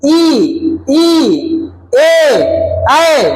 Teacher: ई ए ऐ है ना ये क्या है अग्र भाग है जब अग्र भाग से जीव से बोलते हैं तो उसे हम अग्र स्वर कहते हैं